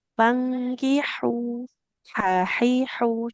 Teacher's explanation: Sama di sini huruf H-nya jangan fangkihu ya. Kan kalau huruf H dia di tengah-tengah tenggorokan kita.